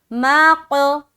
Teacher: تو یہ جو ہے نا مَاق، یہ ملا، پھر ق، یہ جدا ہوا، تو مل کر جدا ہونے کا نام ہی قلقلہ ہے